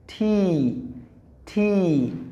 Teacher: এরপরে যেটা আছে আমরা এটাকে বলি টি, এটা আসলে টি নয়, এটার উচ্চারণ হলো, সঠিক উচ্চারণ হলো ঠি, ঠি, ঠি। জিহ্বার অগ্রভাগ যে অ্যালভেলিয়ার রিজ আছে, তার মানে দাঁতের যে নিচের যে শক্ত অংশ আছে সেখানে লাগিয়ে এটা উচ্চারণ করতে হয়